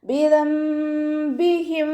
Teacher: നമ്മൾ നൂൻ സാക്കിനെയും തെൻവീനിനെയും മീമാക്കി മാറ്റി മറിച്ചിട്ട് ഉച്ചരിക്കുക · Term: ഇഖ്ലാബാണ്